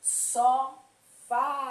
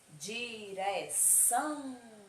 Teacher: essas palavras, elas são oxítonas, porque a última sílaba dela será a mais forte